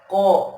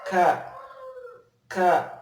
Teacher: Kalau kop ke dalam, kalau kaf agak sedikit naik, keluar, diangkat.